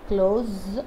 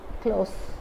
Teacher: As a verb, this word is pronounced as close with the z sound. As an adjective, this word is pronounced as close, close with the s sound.